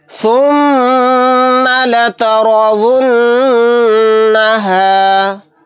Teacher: یہاں پر میم کے اوپر تشدید ہے، یہاں پر غنہ کر کے پڑھیں گے۔ را کو موٹا یعنی پر پڑھیں گے۔